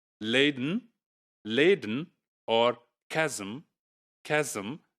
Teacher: a nasal sound can be syllabic when it is taking place along with an obstruent in words like laden, laden, or chasm, chasm. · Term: syllabicity